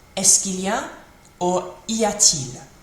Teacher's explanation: So instead of saying il y a il, where there's that kind of sound in it, that glottal stop, il y a il, they don't like the sound of that, so it becomes y a-t-il. So il y a, and voice up at the end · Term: rising intonation